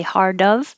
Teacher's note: it back on again for the of but if i say hard of it's just on the whole time you should try it and feel vibration in your throat the whole time